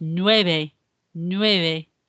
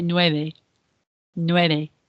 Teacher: not a V sound, it's more of a B sound. It's a subtle B sound, and it's nueve, nueve.